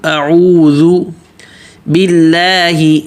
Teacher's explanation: سب سے پہلے اعوذ باللہ، اعوذ، حمزہ پتلا، عوذ، عو پہ ہونٹ گول اور ذو نرم کر کے ہونٹ گول، اعوذ باللہ، با پتلا، اللہ کا لام بھی پتلا، اس لیے کہ اللہ کے نام سے پہلے زیر ہے تو پتلا پڑھیں گے۔